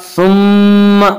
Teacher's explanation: मीम मुशद्दद गुन्ना होगा